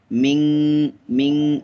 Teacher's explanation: সাউন্ডটা ক্লিয়ারলি হবে না, এখানে ইএনজি লেটারের মতো সাউন্ড হয় নুনে। এখানে ছিল মিম নুনের মিন, তাই না, ক্লিয়ারলি, কিন্তু এই যে ইখফা রুলস থাকার কারণে, নুন সুকুন এর লেফট সাইড ইখফা লেটার জিম থাকার কারণে এটা এই সাউন্ড ডু নট ক্লিয়ারলি হবে।